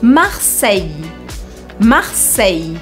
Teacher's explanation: em Marseille, o L desaparece e a gente acaba fazendo um I comprido. Sempre em francês que vocês encontrarem I-L-L-E, a gente vai fazer esse I comprido.